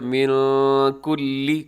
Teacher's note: یہاں نون ساکن ہے، نون ساکن کے بعد کاف ہے، اب یہاں پہ اخفا کیجیے گا